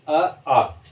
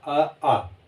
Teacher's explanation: अ और आ आप बोल के देखेंगे, अ आ, जब आप बोलेंगे तो यहाँ कंठ में आपको कंपन महसूस होगा, अ आ। ठीक तो अ और आ का उच्चारण स्थान किससे होता है, कंठ से।